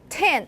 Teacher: okay try you can use your hand and try it because when you're saying 10 there's a much stronger bigger puff of air · when you're saying tan, there's a much stronger, bigger puff of air coming out of your mouth. So that creates a longer duration on your spectrogram. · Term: aspiration